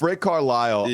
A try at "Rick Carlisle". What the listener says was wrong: Rick Carlisle? You kind of went. Why did the emphasis go on the end of Carlisle's name? It's Rick Carlisle. You said Rick Carlisle?